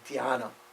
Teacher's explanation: which is an aspirated D, followed by a Y, so D-H-Y, we would write in the West.